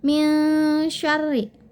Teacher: nun mati bertemu dengan huruf shin besar, maka pembacaannya itu harus dengan didengungkan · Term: ikhfa